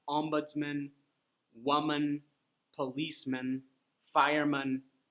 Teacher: all those words have the schwa sound, man, instead of man. If you say man, it'll sound a little awkward.